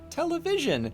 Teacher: she pronounces it wrong in a way that's actually very unnerving, because she emphasises the “vision”